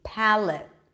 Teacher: it's a light L though it's darker for many speakers